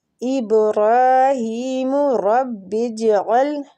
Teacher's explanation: جیم پہ کلکلہ کریں گے، کلکلہ اس کی صفت ہے، ساکن ہے جیم